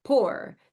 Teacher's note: the child is saying the P for the F.